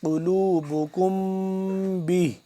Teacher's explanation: اخفا یعنی کہ ناک کے اندر لے جا کر آواز کو چھپا کر پڑھاتے ہیں